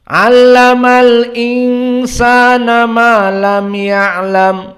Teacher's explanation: Diidharkan dari hamzahnya dan tidak ada berhenti